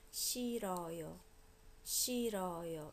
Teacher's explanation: When it's followed by a vowel, h almost disappears, so it's as if it doesn't exist.